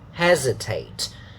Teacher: pay attention that it's not an S sound, but Z. Hesitate. And then the A sound, we have already looked at it many times in this unit, which is good.